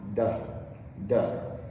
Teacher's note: That's right, it's the tongue and what they call the alveolar ridge, which is just above the top teeth and a little behind. So, after the tongue touches the alveolar ridge, it releases